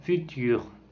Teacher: C'est une voyelle intérieure fermée, arrondie par la position arrondie des lèvres et orale.